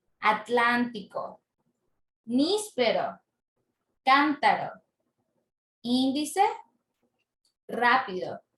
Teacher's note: la sílaba tónica está en la antepenúltima sílaba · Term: palabras esdrújulas, esdrújulas